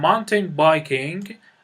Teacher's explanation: استرس بر روی mountain یا کوه قرار میگیره